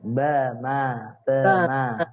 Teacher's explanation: ba sama mim, makhrajnya ini sama-sama di bibir.